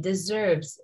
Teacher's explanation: the letter s is usually pronounced as Z between vowels so deserves sounds like a z even though this is not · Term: z sound